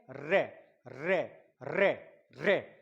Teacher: जीभ लुढ़क रही है, परकंपित कंपन हो रहा है · जीभ का कंपन हो रहा है